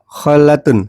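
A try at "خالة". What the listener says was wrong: Khalatun panjang. Khola panjang.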